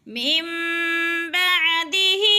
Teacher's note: نون ساکن کے بعد اگر با آ جائے تو وہ نون ساکن کو نہیں پڑھتے، بلکہ یہ چھوٹی سی جو میم کھڑی ہوئی ہے اس کو اقلاب والی میم کو پڑھتے ہیں